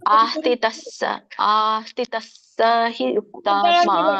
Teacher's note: ಸರಿಯಾದ ವಿಧಾನ ಅಲ್ಲಿ ಹ ಮಾತ್ರ ಸ್ವಲ್ಪ ಮಾತ್ರ ಉಚ್ಚಾರಣೆ ಆಗಬೇಕು ಮಧ್ಯದಲ್ಲಿ ಇದ್ದಾಗ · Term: ವಿಸರ್ಗ